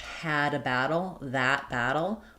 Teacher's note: And what you want is to have that a sound be different. Basically the a is open in the front. My tongue is behind my lower front teeth and my back of my tongue is raised. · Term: a vowel